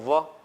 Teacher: ઉપરના દાંત નીચેના હોઠને સ્પર્શ કરશે. બોલો તો વ અડે છે, એટલા માટે એને દંતોષ્ઠ કહેવાય.